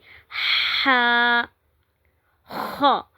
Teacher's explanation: हा वस्त हलक यानी कि हलक के दरमियानी हिस्से से जो हरूफ हलकी में से है जो हलक से अदा होते हैं और यह हलक के दरमियानी हिस्से से अदा होता है। इसको भी हम नरमी के साथ आराम के साथ अदा करते हैं।